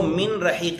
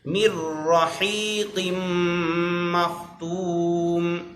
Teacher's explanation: نون را میں داخل ہو جائے گا، ادغام ہو جائے گا.